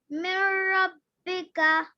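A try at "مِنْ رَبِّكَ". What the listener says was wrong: जी, रा के ऊपर जबर हो तो बेटा आवाज मोटी करके पढ़ते हैं। जी, लंबा नहीं करेंगे, रा पर जबर है। रब्बी करें, रब्बिका, रब्बिका। रब्बी नहीं, रा को लंबा नहीं करेंगे क्योंकि जबर है। रब, रब, मिर रब्बिका।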